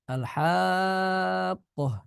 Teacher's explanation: panjang di baca panjang 6 harakat